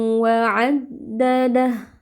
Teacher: Jadi ada suara yang masuk ke rongga hidung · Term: idgham bighunah